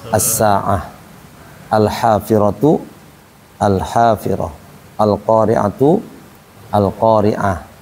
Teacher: Nah, kalau di buku satu itu ada yang berhentinya dengan cara ha ya kan ta marbutah dengan ha marbutah. Apabila dihentikan kita tidak melihat harakatnya maka dia bunyinya ha.